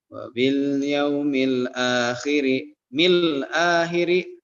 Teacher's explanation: Mil akhiri alif lam Komariah. qamariyah juga karena setelah alif lam ada huruf hamzah dan dibaca jelas